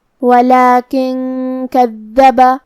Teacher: کلمت کذب میں کاف حروف الاخفاء میں سے ہے اور اخفاء کا معنی ہے چھپا دینا، تو ہم یہاں نون ساکن کو چھپائیں گے اور غنہ کے ساتھ یہ حکم کو ادا کریں گے